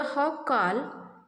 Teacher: Here both the syllables are stressed. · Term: spondy